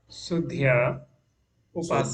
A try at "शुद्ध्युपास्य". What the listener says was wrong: सुध्या plus उपास्य क्या होगा? दोनों जोड़ के बोलिए। हाँ, इसको आपको उच्चारण सीखना पड़ेगा, शुद्ध्युपास्य।